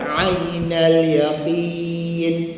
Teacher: ain tengah halkum ya tengah lidah. Perpindahan daripada tengah halkum. ke tengah lidah.